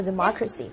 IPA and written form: dɪˋmɑkrəsɪ (democracy)